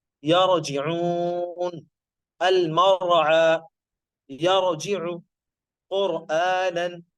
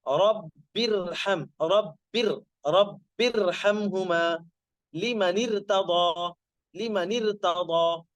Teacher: را ساکن، اس سے پہلے والے حرف پر زبر یا پیش تو اس کو موٹا پڑا جائے گا